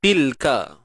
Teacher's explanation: Matikan lam di sini tanpa kita melantunkan ataupun memberanakkan bunyi lam.